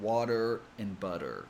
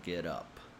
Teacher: it's when the T kind of sounds like a D sound it can also be called a fast D or tap t since you quickly tap the tip of the tongue on the gum Ridge when pronouncing it it happens when t comes in between two vowels and in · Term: flap T, flap T sound